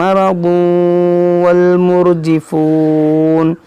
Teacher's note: यहाँ तनवीन के बाद वाव है, तो यहाँ पर इदगाम होगा